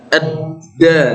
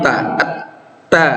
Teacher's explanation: Kalau ini sifatnya dalnya qalqalah, kalau ta fahathahu syakhsun sakata sifatnya hamas ya. Jadi sifatnya beda.